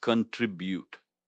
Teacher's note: Stress is on the second syllable, trib.